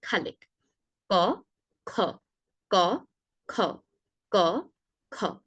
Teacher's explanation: ক অল্প প্রাণ, খ মহাপ্রাণ। ক উচ্চারণের সময় বাতাসের জোরটা কম দিয়ে আমরা উচ্চারণ করব। খ উচ্চারণের সময় বাতাসের জোরটা বেশি দিয়ে উচ্চারণ করব।